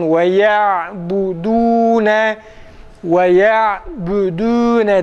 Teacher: Dal harfinin dammeli halini okuyacağız arkadaşlar. Dal harfi ü sesiyle değil de u'ya yakın bir sese veya u sesiyle okunur. Kesinlikle ü sesiyle, özellikle tam bariz Türkçedeki ü sesiyle kesinlikle okunmaması gerekir.